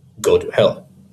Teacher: And anapests, which are two unstressed syllables followed by a stressed syllable